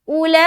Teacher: हर्फ मद के बाद हमजा उसी लफ्ज में है, लिहाजा मद्दे मुत्तसिल होगा, 3 से 4 अलिफ खींचेंगे